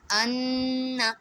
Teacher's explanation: from that point from where the noon or a mim mushaddad is joining with the previous letter, from that point we have to stretch that for 1 to 2 seconds, from not from the last. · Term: gunna